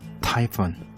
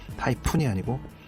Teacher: 윗입술 아랫입술을 붙여서 팍 내는 그런 파열음이 아니라 위에 이빨 아래 입술, 그래서 댔다가 바로 떼면서 새는 소리, 그게 F 발음이죠. 그래서 타이푼이 아니고 타이푼이라고 발음해 주시면 돼요.